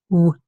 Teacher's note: it's a bilabial Glide